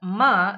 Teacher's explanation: when you pronounce the sound ma airstream passes through the nose as a result of the lowering of the soft palate or the velum which is situated at the back of the mouth so sounds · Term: nasal bilabial sound